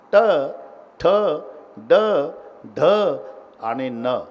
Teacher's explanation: जीभ वाकडीहून वरच्या टाळूला स्पर्श करते प्रत्येक वर्णाच्या. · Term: तालव्य